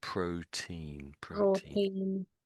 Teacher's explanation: Don't trill the R. The R is sort of flat.